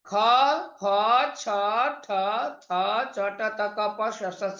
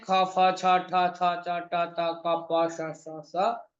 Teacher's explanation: तो विवार, श्वास, अघोष होता है इन खर प्रत्याहार अंतर्गत वर्णों का बाह्य प्रयत्न